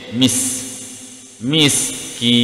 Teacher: mis huruf sin ada keluar angin sedikit, mis, miskin, di sini mad arif disukun.